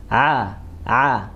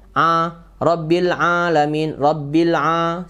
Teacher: Ain sama H satu makhraj ya di tengah tenggorokan maka seperti jakun ini seperti bergerak